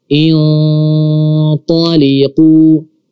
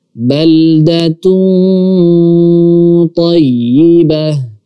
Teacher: Kemudian di huruf ta, tayyib, di huruf ta. Huruf ta adalah huruf tebal, huruf isti'la dan juga huruf itbaq. Otomatis ikhfa-nya di sini juga kita baca tebal.